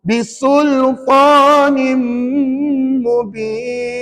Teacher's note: Kalau tak tutup bibir salah. Kena tutup bibir. Sebab nak sebut mim mesti tutup bibir.